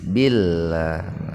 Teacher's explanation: huruf lam didahului kasroh, maka lamnya dibaca tarkik tipis